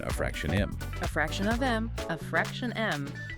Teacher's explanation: In that phrase, the speaker is likely putting stress on fraction.